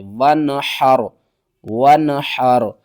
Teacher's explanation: لی ربی کا، واو نون زبر ون، حا را زبر حر، ون حر، یہاں پر آپ نے نون کی آواز کو ظاہر کرنا ہے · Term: اظہار